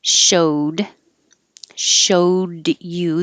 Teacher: the d and the y will make it j